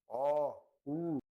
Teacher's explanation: Sons produzidos quando recuamos e subimos progressivamente a parte posterior da língua rumo ao véu palatino, arredondando e estreitando gradativamente os lábios. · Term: posteriores